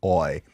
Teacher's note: for boil, the OI sound, we have our quote-unquote backward C for aw, followed by the glide y, oi. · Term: diphthongs